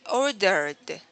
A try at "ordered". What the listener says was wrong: Okay, see, that was good.